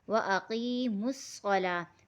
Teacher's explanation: لام کے ساتھ واو نہیں پڑھا جائے گا کیونکہ واو اس میں خالی ہے۔ اگر کسی حرف کے اوپر کوئی حرکت، اوپر نیچے کوئی حرکت نہ ہو تو وہ حرف خالی کہلاتا ہے، یعنی وہ سائلنٹ ہو جائے گا۔